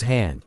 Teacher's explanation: consists of the sound of breath passing between the open vocal cords and out of the mouth, which is already prepared for the following vowel. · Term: Glottal sounds